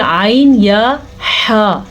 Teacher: کلمات فتاب علیہ، عین کے مخرج کو واضح کر کے پڑھنا ہے کیونکہ عین حلق کے اس حصے سے نکلتا ہے جہاں سے ہا بھی نکلتا ہے